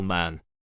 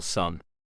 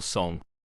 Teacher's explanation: the velum, the fleshy part of the palate near the back, is lowered, allowing air to escape freely through the nose. The oral cavity still acts as a resonance chamber for the sound, but the air does not escape through the mouth as it is blocked by the tongue. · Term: nasal consonant